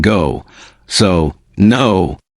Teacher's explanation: your lips become round and forward